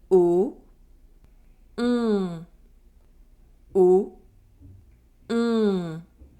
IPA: ɔ̃